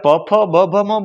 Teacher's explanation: હોઠ બંધ કર્યા વિના એ બોલી જ ન શકો. ખુલ્લા હોઠે પ બોલી ન શકો, એને હોઠ બંધ કરવો જ પડે, એ ઓષ્ટ છે.